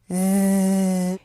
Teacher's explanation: For the /z/, you'll feel a lot of vibrations, that's a signal that your vocal chords are vibrating. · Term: Z sound